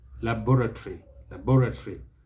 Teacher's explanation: the british will stress the second syllable laboratory laboratory but the americans stress the first syllable laboratory laboratory